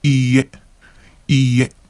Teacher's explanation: make sure that you extend the E syllable